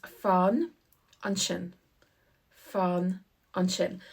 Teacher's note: the A in fan is a short A because we have a long A with fada. So this is more like an O in this case.